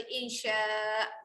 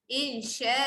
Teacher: berikan a tu hak bunyi 2 harakat. Seolah-olah dia ada alif kat situ. Yang ni adalah hukum mat iwat.